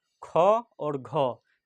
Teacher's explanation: ये दो शब्द बोलते हैं तो मुंह से अधिक हवा निकलता है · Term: महाप्राण